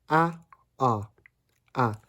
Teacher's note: Tagalog open vowel is a. Again, not real in English, but you can place it between the hat vowel and the bra vowel.